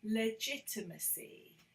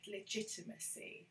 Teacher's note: So we stress the second syllable.